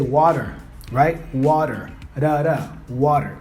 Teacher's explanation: English we also have the flap T which is this sound it's not really a t that we say but it's uh my tongue flaps